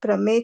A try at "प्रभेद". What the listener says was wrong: प्रभेद से, प्रभेद से, प्रमेद नहीं, प्रभेद।